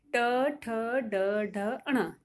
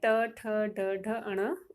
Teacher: ट वर्ग बोलते समय स्वतः ही जीभ जो है वह आगे से मुड़ जाती है